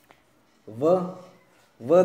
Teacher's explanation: जब व का हम उच्चारण करेंगे तो नीचे वाला ओष्ठ है वो ऊपर वाले दांतों को टच करेगा, इसलिए इनको दांत भी दांतों से भी टच होता है और ओष्ठ से भी टच होता है, इसलिए इसको इसका उच्चारण स्थान है वो दंत और ओष्ठ है और इसे दंतोष्ठी व्यंजन है वो कहा जाता है।